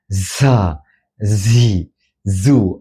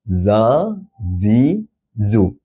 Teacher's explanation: Zai tidak berangin. Zai bersifat jahar.